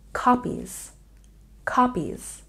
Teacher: copies has a stress on the first syllable